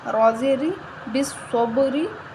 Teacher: صاد کو موٹا پڑھیں گے، حروف مستعلیہ موٹا حروف ہے اور با پہ قلقلہ کریں گے، حروف قلقلہ میں سے ہے، جزم آ رہا ہے، بالصب، را کے نیچے زیر ہے، را کو باریک پڑھیں گے